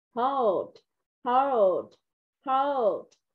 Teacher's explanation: Tại vì cái âm d ở phần cuối này mình sẽ làm phần khẩu hình miệng thôi